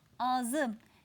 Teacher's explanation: kelimemizin ikinci hecesinde dar bir ünlü var ünlüyle başlayan ek almış bu gibi durumlarda kelimemizin ikinci hecesindeki dar ünlü düşer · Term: ünlü düşmesi